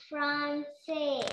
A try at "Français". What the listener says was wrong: Not Francais, Français. F-R-A-N. A-N when comes in French, pronunciation will be O. A-N when comes, pronunciation will be O. Nasal O sound. Français.